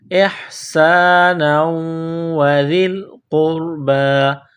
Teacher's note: نون کو واو کے ساتھ ملانا ہے، واو میں سختی کرنی ہے